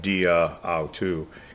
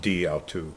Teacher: It's dia. They drop the a whenever you have a Greek word that ends with a vowel and the next word begins with a vowel. The preposition will drop the last letter, but it's still pronounced.